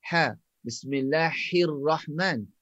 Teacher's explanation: Ha pedas ni makhrajnya di tengah-tengah kerongkong.